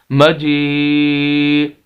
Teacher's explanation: جیسے میں نے شروع کے اندر بتایا اس آیت کے اندر یا اس الفاظ کے اندر کہ واو مدہ، اسی طرح یہ یہاں پر یا مدہ ہے کہ ایسی یا ساکن جس کے پچھلے لفظ کے نیچے زیر ہو اسے یا مدہ بولتے ہیں، اس کو بھی کھینچنا ہوتا ہے